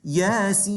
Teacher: this is a 6 vowel count med. So you've got to make it long